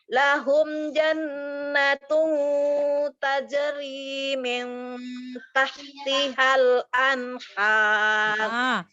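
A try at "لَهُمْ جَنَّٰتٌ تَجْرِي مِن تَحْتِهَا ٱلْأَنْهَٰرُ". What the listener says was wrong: Ikhfanya dijelaskan, ikhfanya. Nun samarnya dijelaskan. Lahum jannatun tajri min tahtihal anhar.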